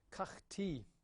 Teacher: notice here I'm giving it with a silent schwa because I believe it mostly takes a silent schwa in that position.